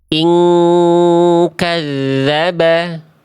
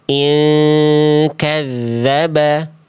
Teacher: Kalau huruf kaf kuat, dengungannya seperti mendekati eng. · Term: ikhfa hakiki